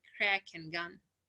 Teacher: back of the tongue and the soft palate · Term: velar